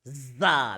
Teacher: It touches nowhere, but it has a little gap. Yeah, the upper teeth and the lower teeth have a little bit of gap, and the tongue does not touch anywhere.